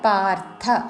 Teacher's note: రా కి మహాప్రాణక్షరము థ వత్తు పార్థ అని ధ పలకకూడదు